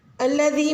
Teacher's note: الذی میں یا مدہ ہے اور دال کا مخرج آپ نرمی سے ادا کریں گے۔ یا مدہ آپ نے 3 سے 4 حرکہ اس کو لمبا کھینچنا ہے